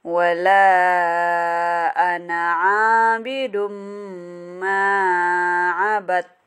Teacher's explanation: Tanwin bertemu mim itu adalah idgham bi gunnah.